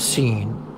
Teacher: the effect of the nasal consonant makes the e sound nasalized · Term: nasalization